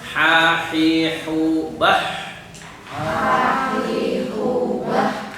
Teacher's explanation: Kemudian ha tengah tenggorokan.